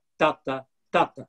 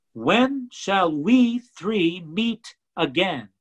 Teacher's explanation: iambic pattern it's in stead of da-da-da-da-da-da it's doctor doctor doctor the stress is first and the unstressed syllable is after that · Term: trochaic tetrameter